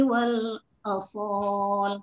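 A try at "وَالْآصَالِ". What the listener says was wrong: Asal panjang wal asal.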